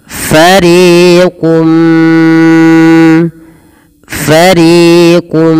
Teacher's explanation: tanwinnya masuk kepada huruf mim dan diganti bunyi suara Mim jangan lagi ah Maf fariquun minhum tapi langsung mengasuk kepada mim · ditahan suara mnya sepanjang dua harakat karena disertai dengan gunah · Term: Idam bunah